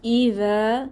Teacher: জিহবার আগা, দাঁতের আগা, নরম আওয়াজ। ইদা এখানে একটা ঢেউ খেলানো চিহ্ন আছে, এরকম এটা হচ্ছে মাদের সাইন, এরকম চিহ্ন আসলে 3 আলিফ টেনে পড়তে হয়।